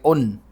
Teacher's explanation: نون نکالتے وقت ہماری زبان جو ہے وہ اوپر کے تالو کو لگ رہی ہے